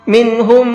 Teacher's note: منہم، یہاں پر میم ساکن کے بعد میں ایک اور میم ہے، اور میم ساکن کے بعد میں میم آتا ہے تو وہاں میم کو میم میں ملا کر کے غنہ کر کے پڑھتے ہیں۔ تو پہلے والے میم کو دوسرے والے میم میں ملا دیں گے اور ساتھ میں غنہ کر کے پڑھیں گے۔